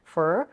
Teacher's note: Next is the reduction of for to fur.